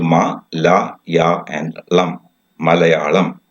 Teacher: all the syllables are given equal importance